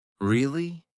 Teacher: Now say it with falling then rising intonation.